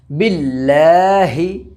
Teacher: छोटी हा सीने की तरफ से निकलता है ना। अक़साय, हलक इसका मखरज है, तो यहाँ से बोलना है, ये वाला नहीं।